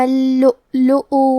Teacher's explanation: کلمت اللؤلؤ میں حرف اللام پہ تشدید ہے تو ہمیں 2 حرف کے برابر لام کو پڑھنا ہے۔ یہاں واو پہ حمزہ ہے اور اس پہ جزم ہے تو ہم جزم کو ظاہر کریں گے۔